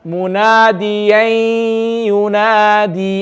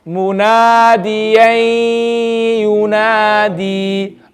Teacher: You did complete idgham. We want to do incomplete idgham by making the gunna sound stay behind.